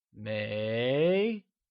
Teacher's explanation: 没 is pronounced using a mid-rising tone.